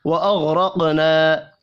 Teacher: واغرقنا، اب یہاں پر غین، را اور قاف تینوں پر پڑے جائیں گے، قاف ساکن پر قلقلہ کریں گے، چھوٹی مد کو 3 الف کے برابر کھینچ کر پڑھنا ہے